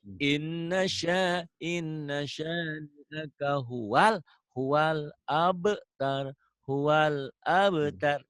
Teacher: Hualnya jangan ngegelik di alif lam komariah ya, itu idhar komari.